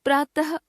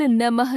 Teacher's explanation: विसर्ग को ह के रूप में बोला जाता है तथा दो बिंदुओं के रूप में इस तरह लिखा जाता है